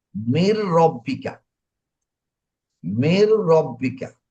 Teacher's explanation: যখন নুন সাকিনের পরে র থাকবে তখন গুণনা করতে হবে না, একালিফ টানতে হবে না। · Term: ঈদগাম